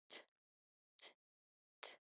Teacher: the air here is stopped and then realized in a quick, sharp voice or puff